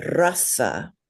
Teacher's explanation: you want to roll that R more like a Spanish or even a Russian R